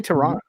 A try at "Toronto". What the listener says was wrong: you don't pronounce the second T